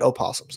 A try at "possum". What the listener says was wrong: Not called an opossum, just a possum. O is silent. It's not an opossum. It's a possum.